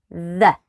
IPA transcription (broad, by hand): ð